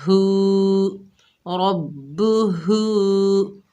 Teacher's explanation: ہا کے اوپر الٹا پیش ہے، ایک الف کی مقدار کھینچ کر پڑھیں گے، ہا کو سینے سے ادا کریں گے